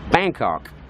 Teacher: the Thais pronounce it in the American way, where the emphasis is on the first syllable of Bangkok. So they pronounce it Bangkok, like the Americans would do.